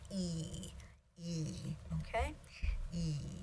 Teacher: At this point, it is, and you can see how your tongue is actually much more front. It is front, and it's a flat sound. So an unrounded, high front vowel.